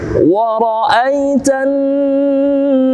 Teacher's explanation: Ra'ai jannasa, alif lam bertemu dengan nun, di sini masuk alif lam syamsiah atau idgham syamsiah. Idgham artinya memasukkan, dia menghilangkan alif lam langsung masuk kepada annasa. Fathah na bertemu dengan alif, maka dibaca dua harakat sebagai mad tabi'i.